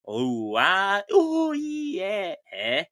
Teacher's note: we reduplicate the final vowel with a breath switch, leaving it as ooh, ah, ooh, yeah.